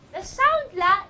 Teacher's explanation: The sound la is a lateral sound. Why is it a lateral sound? Because you have a lateral airflow.